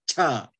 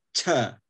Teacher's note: So you have to say gacham, cha, you know, with that extra puff of air, cha, yeah. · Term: aspiration